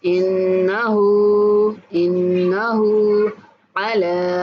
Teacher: انہ پہ غنہ کریں گے اور ہا کو کھینچ کے پڑھیں گے۔ انہ علی، لام کے اوپر کھڑا زبر ہے تو لام کو بھی ہم نے کھینچ کے پڑھنا ہے